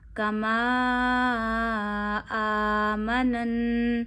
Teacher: مد سے آگے حمزہ ہو تو مد کو دو انگلیوں جتنا کھینچا جاتا ہے